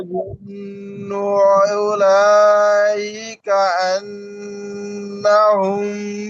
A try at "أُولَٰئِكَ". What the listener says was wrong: এখন বিষয় হচ্ছে উলাইকা, এখানে উলার এখানে স্পষ্ট করতে হবে ভাই, উলা উলা উলা এরকম না।